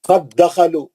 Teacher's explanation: कद दखलू, दाल साकिन का दा मुशद्दद में हो गया। लिखे तो 2 दाल है लेकिन पढ़ेंगे सिर्फ मुशद्दद से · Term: इदगाम में मुतमासिल